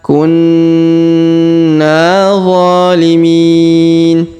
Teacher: Huruf Na berharokat tasdid, maka kita tahan dan tekan serta dengungkan 2-3 harokat. Kemudian kita panjangkan lagi 2 harokat karena alif di depannya.